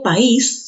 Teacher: Por ejemplo, tenemos, si yo digo país, ¿qué ha sucedido? La A con la I se han pronunciado en diferentes sílabas. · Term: Hiato acentual, hiato acentual